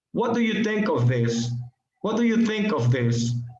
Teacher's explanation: When the particle is at, for, of, or with, we put stress on the verb, as in think of.